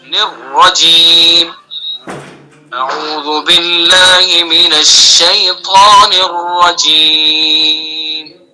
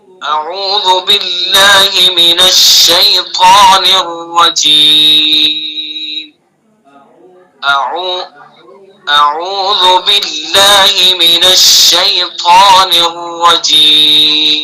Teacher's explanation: نرجیم نون کو را میں ملانا ہے، را کو مشدد کرنا ہے، تشدید ہے اس کے اوپر